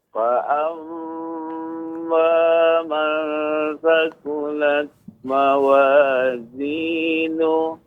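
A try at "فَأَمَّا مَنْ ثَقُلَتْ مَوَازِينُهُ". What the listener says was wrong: Nuh, ha besar, nuh. Ha juga begitu, Pak. Ada sisa nafasnya, aliran udara. Nuh.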